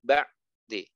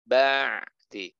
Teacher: Udaranya tidak dihembuskan, tidak ada udara yang dihembuskan. Kemudian dia suaranya tawasud, pertengahan antara mengalir dan tertahan. Artinya suaranya tidak terhenti ketika sukun